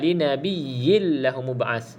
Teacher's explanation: Okey, kalau sahabat-sahabat yang belajar tajwid, di sini ada namanya idgham bila gunnah. Kita masukkan dalam lam tanpa ada gunnah.